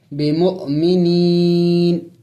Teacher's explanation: اور جب وقف کریں گے، یہاں پہ چونکہ وقف کرنا ہے، آیات ہے اور چونکہ اوپر میم بھی ہے، اس پر وقف لازم ہوتا ہے، وقف یعنی ضروری ہوتا ہے۔ جب ہم نے وقف کرنا ہوگا تو اس نون کو سائلنٹ کرنا ہوگا، یعنی ساکن کرنا ہوگا